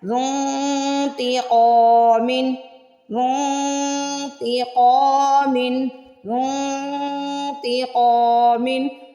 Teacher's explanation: یہاں پہ زن کو ہم کریں گے زنتیقا، زنتیقا، میم دو زیر من، زنتیقا من۔ قاف کو موٹا بھی پڑھنا ہے اور زبر کے بعد الف آ رہا ہے تو قاف کو سٹریچ بھی کرنا ہے، کھینچنا ہے۔